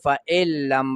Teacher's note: نون ساکن دی د هغې نه وروسته لام راغی نو دا نون به په لام کې ادغام تام کوي، ورننوځي به نون به پکې نه وایو، فإلم به وایو، غنه به هم نه کوو، ادغام تام مکمل ادغام به کوو.